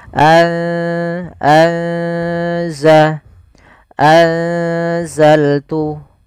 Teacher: anza seakan-akan kita langsung menafalkan ke huruf zainya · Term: ikhfa